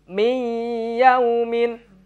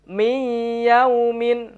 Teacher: nun sukun ketemu huruf ya adalah bacaan Idgham Bighunnah dan dibaca dengan samar dan juga melebur huruf nun melebur dengan huruf ya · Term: idgham bihunah